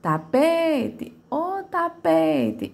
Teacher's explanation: Ela é a minha sílaba de maior tonicidade, certo? Então, a minha sílaba tônica será a penúltima.